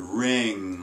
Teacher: at the end of the word ring and so there your soft palate is open or dropped as opposed to being lifted or closed